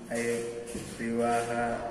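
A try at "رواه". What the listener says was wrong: Bukan riwa. Kalau riwa riwah nanti, ya. Ruwahalahu.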